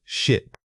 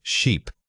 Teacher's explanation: Focusing on the length of the vowel, the sheer difference between these two words comes down entirely to that single vowel sound. If you hear a short quick burst of air, it's ship. If you hear a sustained stretched sound, it must be sheep.